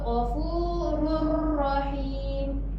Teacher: Tanwin ni dia terus masuk ke dalam ra tanpa dengung. Dia terus masuk sebab dia ada syaddah.